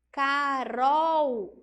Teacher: C-A-K, R-O, Ró. Esse L no final vai ter som de U.